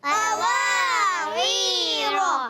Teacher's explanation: वाव में होंठ गोल होते हैं